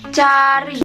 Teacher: Fonem C adalah bunyi yang diucapkan dengan menutup bagian depan mulut dengan lidah pada langit-langit keras.